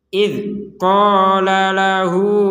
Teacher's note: jadi jelas matinya itu jelas enggak ada huruf e enggak ada terdengar e sama sekali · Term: Dal sukun